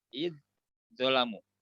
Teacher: yang pertama zal sukun, kedepannya huruf zo berbaris. Ini satu makhraj, beda sifat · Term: idgham mutajanisain